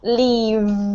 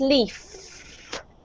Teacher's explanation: So we've got the same position with our mouth, this position, with our teeth on our lips. But when you say the letter V, you have to expel air, but you also have to make a sound with your throat